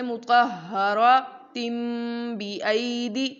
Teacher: لیکن اگر ہم اسے آگے ملا کر پڑھنا چاہیں جیسے مطہراتن بِأَیْدِی، تو ہم نے اس تن کو تم میں بدل دینا ہے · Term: اقلاب